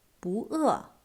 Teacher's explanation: The original tone of the character bu is fourth tone, bu. But when it used before another fourth tone, it would change into the second tone